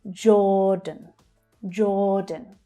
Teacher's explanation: Again, the j consonant sound, followed by the or vowel sound. Or as in door. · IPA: /ɔː/